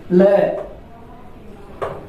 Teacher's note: पार्श्विक व्यंजन, पार्श्व कहते हैं बगल को, जिसके उच्चारण करते समय वायु प्रायः बगल से निकल जाए, ल, तो ये पार्श्विक व्यंजन कहलाता है।